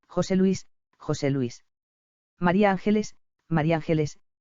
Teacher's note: y topónimos pluri verbales formados por la yuxtaposición de varios elementos el primero de ellos aún siendo tónico por naturaleza pierde su acento prosódico en ese contexto y se hace a tono josé luís josé luís maría ángeles